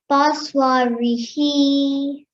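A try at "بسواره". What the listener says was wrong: Excellent. Just like that. Good.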